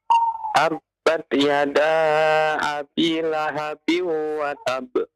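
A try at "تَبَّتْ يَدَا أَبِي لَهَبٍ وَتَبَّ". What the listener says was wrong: Wa tab. Tahan dulu. Ada tasydid di sana. Tabbat yada abi lahabin wa tab.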